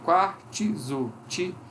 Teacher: depois do quar, esse T aparece como um izinho